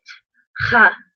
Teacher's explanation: always have to roll your throat and pronounce it ha almost like you're kind of hacking